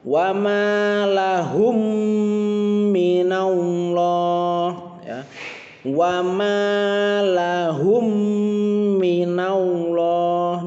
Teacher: jika ada mim sukun bertemu dengan mim dibaca dengan tambahan dengung 2 harokat ya, ditambahkan dengung 2 harokat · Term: idgham mimi